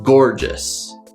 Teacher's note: so we have two syllables gore and just the stress is on the first syllable · So we have two syllables, gor and jus. The stress is on the first syllable, gorgeous. The first syllable starts with the G sound, g, g, g, followed by the R-controlled vowel, or.